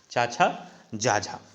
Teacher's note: स्पर्श संघर्षी व्यंजनों का उच्चारण स्थान तालु होता है, अर्थात चा छा जा झा व्यंजनों का उच्चारण स्थान तालु होता है। इन वर्णों का उच्चारण स्थान तालु होने की वजह से इनको तालव्य व्यंजन भी कहते हैं।